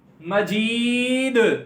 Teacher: اور دال دو پیش ہیں, وقف کی صورت میں دو پیش کیا ہو جاتی ہیں, جزم. مجید, اور دال حروف قلقلہ میں سے ہے, یہاں پر یہ پہلے سے ساکن تھا تو قلقلہ خوب ظاہر ہوا ہے